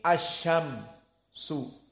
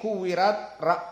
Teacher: Idza syam tidak boleh keluar nafas. Kuwirat ada keluar nafas. Maka ta di sini sifatnya al-hams dan mim sifatnya dalam keadaan al-jahr.